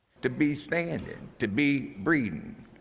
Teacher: A lot of New Orleans speakers, especially older or broader speakers, don't aspirate plosives in any situation, so they pronounce sounds like p and k more like a French or a Spanish speaker would, more like b and g.